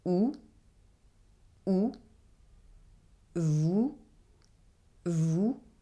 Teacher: For the sound [u], my tongue is backward and not touching my lower teeth.